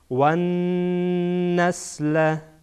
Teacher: نون در واقع زبان میچسبه به قسمت بیخ دندانهای ثنای علیا، البته کمی بالاتر از بیخ دندانها. صدا از دهان کاملا بند میشه.